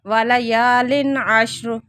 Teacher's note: تنوین کے بعد آگے عین آ رہے ہیں تو اظہار ہو رہا ہے